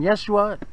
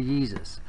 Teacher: Romans had a hard time with that Sh sound so they changed it to an S and also they thought it sound a little too feminine and